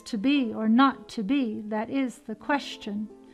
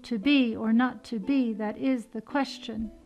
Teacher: Each time I have an unaccented extra foot, and that's called a feminine ending.